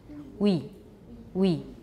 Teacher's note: we english we is more front the is more back so start from a back ooh the cardinal ooh that we learned start there for your w and then go very quickly to e we so it's not english we it sounds a lot more